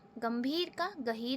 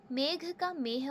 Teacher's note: शब्दों के मध्य और कहीं अंत में आने वाली महाप्राण ध्वनियों जैसे ख, ध, थ, घ भ के स्थान पर केवल ह का प्रयोग हो गया।